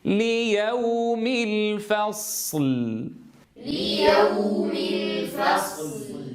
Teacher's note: تجاور حرفان ساكنان، الأول منهما رخو وهو الصاد، والثاني منهما بيني وهو اللام، فلا بد أن نمايز بينهما في الزمن